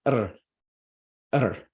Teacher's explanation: this is a sound we do not have in English it's a vocalic r sound